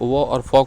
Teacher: आपके जो ऊपर का दांत है और नीचे का होट क्या हो रहा है उसको दाब रहा है